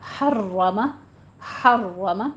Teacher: حرم تکرار ہوگی تھوڑی سی